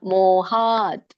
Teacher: ಮೋ ದೀರ್ಘ ಹಾ ದೀರ್ಘ ತ ವ್ಯಂಜನ